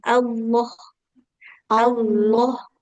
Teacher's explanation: jadi tanpa ada W tidak ada ya, jangan seperti ada wunnya ya. Lalu langsung lam tapi lamnya lam tebal.